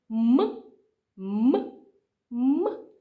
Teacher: наші губки стають перешкодою тому що вони зближені одна до одної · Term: звук м